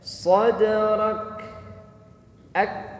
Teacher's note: huruf kaf itu punya sifat hams dan juga punya sifat syiddah, mengalir nafas tetapi suaranya tertahan. Nafasnya ngalir tapi suaranya tertahan.